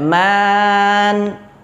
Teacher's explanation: di situ terdapat mad tabi'i, dibaca selama 2 harokat